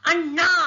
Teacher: Here you can hear that na gets stretched. ಇಲ್ಲಿ ಅಣ್ಣ ಎಳೆದಾಗ ಅದು ಪ್ಲುತಸ್ವರ ಆಗತ್ತೆ, ಆರ್ overlong vowel.